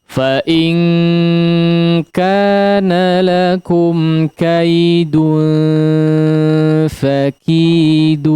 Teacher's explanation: huruf fa yang menjadi huruf ikhfa-nya ya, artinya ikhfa-nya bertemu dengan huruf yang tipis ya, sehingga ikhfa-nya pun jadi tipis ya.